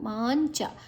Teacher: ಮಾದ ನಂತರ ಅನುಸ್ವರದ ಉಚ್ಚಾರಣೆ ಞ ಮುಂದಿನ ಅಕ್ಷರ ಚ ಇದೆ.